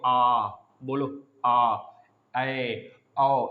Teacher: विवृत में मुख जो है बड़ा सा खुलेगा भट्टे जैसा, तो आप जैसे कि मुंह बाओगे आ, बोलो आ, ए, औ, या वाले वर्ड भट्टा जैसा खुलेगा, आ, ए, औ, यह तीनों वर्ड आ जाते हैं हमारे विवृत स्वर में।